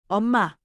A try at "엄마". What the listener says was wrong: Good for the noun, but for calling, lift it.